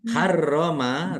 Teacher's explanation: Az-zakaro ini harroma, roknya dibaca double, ada tasdidnya, ditekan dan ditahan biar tampak double